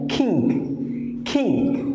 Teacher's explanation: ये का नहीं है, ख, with aspiration as एन किंग